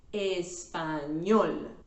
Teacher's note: The stress syllable is at the end, la última sílaba, sílaba número 3 in this case, español.